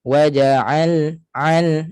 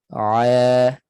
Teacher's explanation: Ain tidak ada naik suara ke hidung.